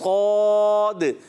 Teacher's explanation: صاد، اس میں دال آتا ہے ساکن تو اس میں آواز لوٹتی ہے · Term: قلقلہ